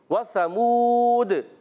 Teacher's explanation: व की अदा होती है होठों की गोलाई से व समूद फिर मदद आरिज हो जाएगा और कल कला भी · واو کی ادائیگی ہوتی ہے ہونٹوں کی گولائی سے، وثمود، پھر مد عارض ہو جائے گا اور قلقلہ بھی ہوگا۔